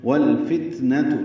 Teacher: لام ساکن پہ اظہار ہے، تا ساکن پہ ہمس ہے